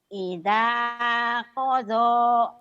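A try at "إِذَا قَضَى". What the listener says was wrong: Ida qada. Bagus.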